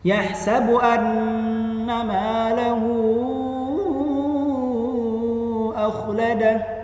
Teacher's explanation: Iya, mad silah tawilah, panjang sekali bacanya ya.